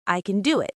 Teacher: We only say a full can if we are emphasizing the ability. Usually it's just a quick schwa sound.